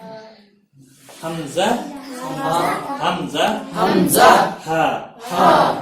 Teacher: इंतहाए हलक से निकलते हैं नरमी के साथ सांस को छोड़ते हुए। हमजा हा, नरमी के साथ, कहीं रोकना नहीं है।